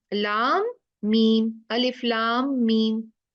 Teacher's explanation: लाम का नाम खत्म हुआ मीम साकिन, मीम का नाम शुरू हुआ मीम कसरा से, दो मीम मिल गए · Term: इदगाम शफवी